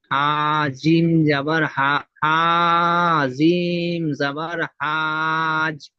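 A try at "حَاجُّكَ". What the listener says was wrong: হাজ হয়ে যাচ্ছে। যেখানে এখানে 3 থেকে 5 5 আলিফ টানতে হবে, সে জায়গায় মোটে টান হচ্ছে না। না, হাজু।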